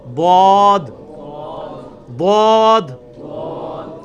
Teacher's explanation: ضاد یعنی لیفٹ زبان کا کنارہ اوپر کے دانتوں کی جڑ میں لگانا ہے, یا دونوں کو پیرلل میں دونوں کو بھی لگا سکتے ہیں.